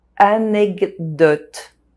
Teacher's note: The D sound modifies the K sound and it becomes a g sound.